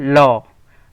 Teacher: जिन व्यंजनों में जीभ तालु को छूते हुए किंतु बगल में से हवा निकल जाती है उन्हें पार्श्विक व्यंजन कहते हैं।